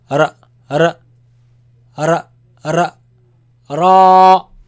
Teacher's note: this sound actually, it comes from the tip of the tongue touching the front palate roof